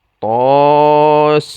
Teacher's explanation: To 2 harokat, sin 6 harokat. Nah, yang dimaksud dengan mad lazim harfi mukhaffaf di sini adalah sinnya, dibaca 6 harokat.